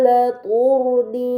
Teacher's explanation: terdapat huruf ro sukun sebelumnya harokat dhammah pada huruf ta, maka ro tersebut harus dibaca secara tebal